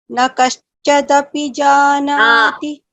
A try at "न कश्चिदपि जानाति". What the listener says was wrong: न कश्चिदपि, not कश्च, I, कश्चिदपि.